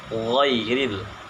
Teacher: Penyebutan huruf gha ini yang pertama yaitu ditahan nafasnya atau disebut dengan jahar, kemudian lunak dan suaranya tidak tertahan atau disebut juga dengan rokhawah. Kemudian pangkal lidah naik ke atas langit-langit. Jadi lidah bagian dalam, bagian pangkal lidah yaitu naik ke atas langit-langit atau disebut juga dengan isti'la.